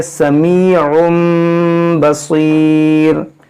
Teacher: तनवीन के बाद बा है, इसलिए यहाँ पर ही छोटा सा मीम आया है, यहाँ पर होगा इक़लाब। इसको पढ़ेंगे समीउम बसीर।